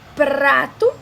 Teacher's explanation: O TEP, que é uma rápida obstrução, que é, por exemplo, o prato, esse R do prato.